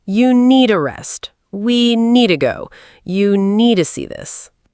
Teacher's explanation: In fast American English, native speakers often pronounce need to like needa.